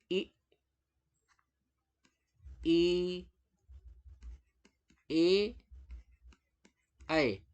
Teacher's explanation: अगर जीभ के अग्रभाग से उच्चारण होता है तो हम इसे कहते हैं अग्र स्वर